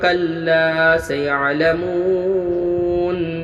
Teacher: لا الف مدہ ہوا، 1 الف مقدار کھینچ کے پڑھنا ہے۔ مو و مدہ ہوا، واو ساکن پہلے پیش ہے، 1 الف مقدار کھینچ کے پڑھنا ہے۔